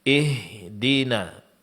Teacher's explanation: Di sini hamzatul wasal dibaca dengan baris kasrah. Sempurnakan baris kasrah dengan menurunkan bibir bagian bawah dan vokal suara berbunyi i